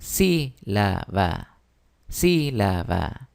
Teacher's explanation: en el caso de sílaba está en la antepenúltima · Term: sílaba tónica